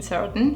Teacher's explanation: Glottal T in certain, have you heard it?